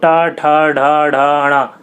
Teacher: मूर्धन्य में आपकी जीभ जो होगी वो पीछे वाले से टकराती है